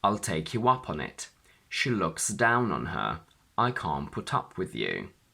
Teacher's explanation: When we have two particles and a pronoun, the stress falls onto the first particle.